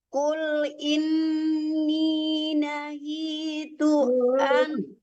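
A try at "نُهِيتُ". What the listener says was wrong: Nuhi bukan nahi ya.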